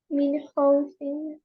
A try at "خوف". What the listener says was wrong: Yeah, the kha more stronger. Khaw.